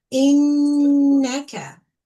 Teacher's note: you hold the sound in your nose for 2 counts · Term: gunna